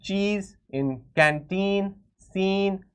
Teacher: we are prolonging, we are stretching the sound of the E, we are making it into a longer vowel